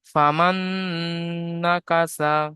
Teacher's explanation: নুন সাকিনের পরে মিনের 4টি অক্ষরের মধ্য থেকে নুন এসেছে, তাই নুন সাকিনকে নুনের সাথে মিলিয়ে এক আলিফ পরিমাণ গুণনাহ করে পড়তে হবে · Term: ইদগামে নাকিস